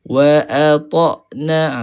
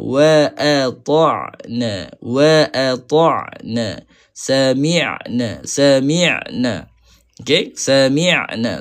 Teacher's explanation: Makhraj dia huruf ain tengah halkum kan? Huruf ain tengah halkum.